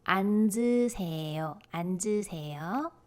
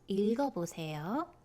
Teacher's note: you have double consonant, but the final consonant carries over to the zero consonant